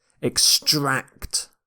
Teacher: You stress the second syllable here.